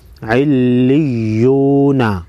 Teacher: د واو ساکن نه مخکې پیش راغلی دی حرف باندې، نو دا به واو مده یو الف مقدار به اوږدیږي، مد اصلي ورته وایي علیون.